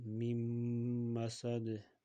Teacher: Ya'ni nunni g'unna qilib ushlaymiz. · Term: g'unnali idg'om